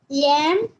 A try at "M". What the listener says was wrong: Not yem. How to pronounce that letter? It is M. You should not pronounce it as yem, yen and all. It's M, N.